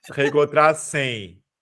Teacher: O som tá saindo pelo nariz. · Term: ditongo decrescente nasal